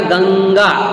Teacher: तो कंठ व्यंजन है ये, कौन सा व्यंजन है, यानी कि कंठ में से बोला जाता है, गले में से बोला जाता है, कंठ स्वर पेटी से।